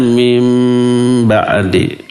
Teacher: iqlab dan si nunnya berubah menjadi mim